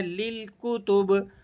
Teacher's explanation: با جب اس پر وقف ہوگا تو یہ با ساکن ہو جائے گا، با پر جو لگی ہوئی زیر ہے اس کو ہم نے گرا دینا ہے اور اس کو ہم نے سائلنٹ موڈ میں پڑھنا ہے، للکتب۔ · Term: قلقلہ